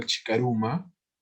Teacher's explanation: hay un fenómeno fonológico, se unen dos vocales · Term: se fusionan dos vocales